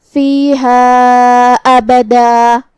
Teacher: کلمت ابدا پہ روکیں گے تو مد الف سے روکیں گے کیونکہ تنوین زبر پہ مد الف سے روکا جاتا ہے، مطلب ہم آخری میں 2 مد کے برابر اپنی آواز لمبی کریں گے